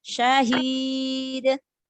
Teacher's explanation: Mat arid disukun. Dalnya qalqalah kubara.